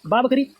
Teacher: ओट से है अल्प प्राण है घोष है